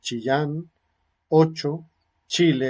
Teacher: También el punto de articulación en este fonema, bueno, y es como históricamente se ha caracterizado también este fono en la historia de la lengua española, ¿no? Se caracteriza como una consonante posalveolar, africada, áfona, sin vibración de cuerdas vocales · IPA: /t͡ʃ/